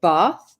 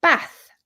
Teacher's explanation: I say bath with the long vowel sound and someone from northern England will say bath with the short a like cat so I'm saying bath like car 'ar' and they say bath